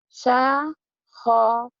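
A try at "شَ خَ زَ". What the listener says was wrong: Ya, Z-nya kurang rapi ya. Gitu ya. Syakhoza.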